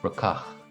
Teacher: down south in Munster, where I'm from, that would be pronounced more rucach, with the emphasis on the second syllable.